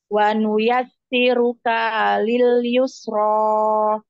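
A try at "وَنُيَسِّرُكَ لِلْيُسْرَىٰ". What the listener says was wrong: Sama kayak ibu Twin, kaknya dipanjangin. Panjang kaknya. Kalil yus. Dibalik sa-nya jadi duluan, ya-nya belakang. Wanuyas siru kalil yusro.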